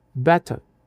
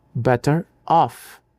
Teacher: Os linguistas chamam isso de linking are. O inglês britânico ressuscita o som apenas para evitar que duas vogais batam uma na outra. · Se o R está no final de uma palavra, ele fica mudo, better. Mas, se a próxima palavra começar com uma vogal, o R volta do mundo dos mortos para servir de ponte, better off. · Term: linking R